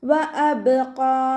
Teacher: ഹംസയുടെ മഖ്റജ് അഖ്സൽ ഹൽക്കാണ്, അതിൻ്റെ സൗണ്ടിനെ വ്യക്തമാക്കി കൊടുക്കുക. ബ കൽക്കലയുടെ ലെറ്റർ ആയതുകൊണ്ട് ഫുൾ സുക്കൂന് കൊടുക്കുക കേട്ടോ. · ഖാഫ് ഇസ്തിഅലാൻ്റെ ലെറ്ററാണ്, തഫ്ഹീം ചെയ്തിട്ട് ഉച്ചരിക്കുക. 2 കൗണ്ട് നീട്ടി നിർത്തി കൊടുക്കുക.